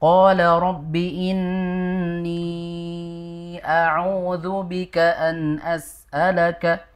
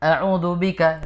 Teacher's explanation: Bukan auzu tapi auzu di situ dipanjangkan dua harakat.